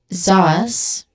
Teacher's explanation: Zaz with a buzzing sound at the beginning, letter Z sound, which is a voiced sound. And zaz, so short sound and then hissing sound at the end.